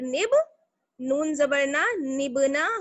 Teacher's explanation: जब नून को हम बा से मिलाएंगे तो बा पर क्या होगा, कलकला